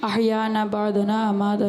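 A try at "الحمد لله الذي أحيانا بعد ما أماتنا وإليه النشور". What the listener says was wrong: بعدنا نہیں ہے, بعد ما, الحمدللہ الذی احیانا بعد ما اماتنا و الیہ النشور.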